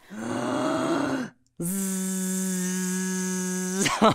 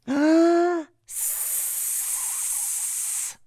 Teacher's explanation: the z is voiced and the s is unvoiced